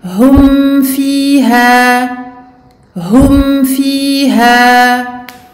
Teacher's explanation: Ici, il s'agit d'un fa, donc on passe du mim au fa sans aucune prolongation.